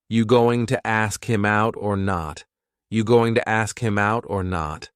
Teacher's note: It's another informal contraction, just like want to. Going to is generally pronounced with the schwa.